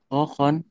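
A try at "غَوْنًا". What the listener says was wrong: go, bukan kohon tuh. go-nya masih ke ho ya, jangan. hohon, gogon ya.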